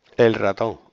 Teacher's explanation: Pero yo creo que ahí se pierde la L. Y porque tiene una R detrás, el ratón.